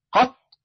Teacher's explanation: فقط ولم يمكن بعد ذلك الاستمرار فهو انفجاري فاذا قلت قط تبين لي ان الطاء انفجاريه